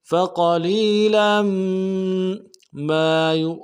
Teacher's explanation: بکفرہم فقلیلا، فا کو نرم سے ادا کریں گے، قاف کو موٹا کرنا ہے، لام کو یا کے ساتھ ملانا ہے، یا مدہ ایک الف دال میں کھینچیں گے، لام کی تنوین کو میم کے ساتھ ملانا ہے، غنہ کرتے ہو۔